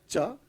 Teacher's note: work is named after cha the first of the five sounds produced by stopping or blocking a part of the oral cavity by touching the palate the top of the mouth with the front part of the tongue